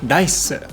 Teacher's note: It's like saying an R sound, ra, but you touch your tongue to the roof of your mouth like it's an L sound, la. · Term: Japanese R